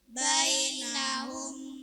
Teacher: memasukkan bunyi mim sukun kepada mim yang kedua serta mendengung selama satu setengah alif atau tiga harakat.